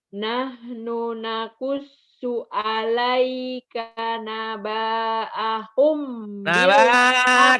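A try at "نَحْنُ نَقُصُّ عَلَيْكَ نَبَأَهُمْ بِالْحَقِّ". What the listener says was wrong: Kenapa panjang? Nggak ada pemanjang. Alaika naba'ahum bil haqq. Nabanya pendek. Hak jangan bil hak bil hak bil hak bil hak. Nakusu Nahnu nakusu.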